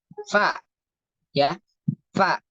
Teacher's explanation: gigi seri atas ketemu bibir bawah bagian dalam ya bagian dalam bukan bagian depan atau ya pokoknya atau di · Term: huruf Fa